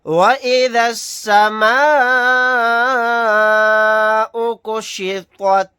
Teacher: یہاں پر الف مدہ کے بعد حمزہ اسی کلیمے میں ہے، یہاں پر مد متصل کا قاعدہ ہوگا۔ اس مد کو ہم 4 الف کی مقدار کھینچ کر پڑھیں گے، طوا کو موٹا یعنی پر پڑھیں گے۔